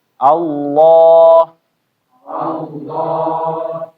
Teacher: Kecuali di satu kata, yaitu di lafzul jalalah yaitu lafaz Allah. Cuma Allah aja yang bacaannya ya tebal.